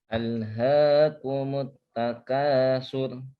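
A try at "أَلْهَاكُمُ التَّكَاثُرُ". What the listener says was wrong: Thur, takatsur tebal, coba. Ditebal ujung lidah bertemu. Dilatih semakin kuat karena memang huruf ro ini ada pembahasan khusus takik dan tafkhim atau tebal, tipis ataupun tebal. Nah, sehingga kita harus juga disiplin pengucapan huruf ro yang tebal kapan dan tipis kapan.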